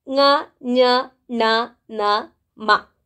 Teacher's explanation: ಈ ವರ್ಣಗಳು ಮೂಗಿನ ಸಹಾಯದಿಂದ ನಾವು ಹೇಳ್ತೇವೆ, ಉಚ್ಚಾರ ಮಾಡ್ತೇವೆ, ಅಥವಾ ಅವುಗಳು ನಾಸಿಕದ ಸಹಾಯದಿಂದ ಹುಟ್ಟುವ ಕಾರಣ ಅವುಗಳನ್ನು ಅನುನಾಸಿಕಗಳು ಅಂತ ಕರಿತೇವೆ.